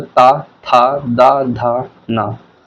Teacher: जो वर्ण हमारा ता वर्ग के अंतर्गत आता है वह दंत ध्वनियों के अंतर्गत आता है।